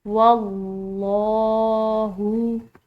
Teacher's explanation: आगे देखिए वल्लाहु, यहाँ पर लफ्ज़ अल्लाह की लाम पूरा अदा करेंगे क्योंकि पीछे का हर्फ जो है वाव ज़बर के साथ है। वल्लाहु।